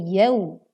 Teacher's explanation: waw lin dibaca dengan lembut panjangnya yaitu yau. Yauma idzil.